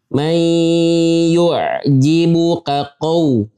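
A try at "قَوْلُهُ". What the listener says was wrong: Ya, qaf fathah qa. Barusan waw. Qaw. Ya. Itu jadi karena kita buru-buru mau masuk waw. Buru-buru monyong jadi ujungnya qaw.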